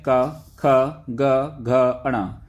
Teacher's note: जिन वर्णों का उच्चारण करते समय जीभ का पिछला हिस्सा हमारे कंठ को छूता है उन्हें कंठीय व्यंजन कहते हैं,